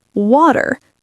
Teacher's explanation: similar to American, but with a slightly rounder R